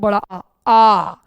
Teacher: और बच्चों एक ही विवृत स्वर होता है जिसको कहते हैं बड़ा आ। आ में मुंह पूरा खुलता है तो इसको कहेंगे विवृत स्वर